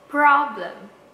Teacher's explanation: Pro-nya yang harus di stress. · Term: word stress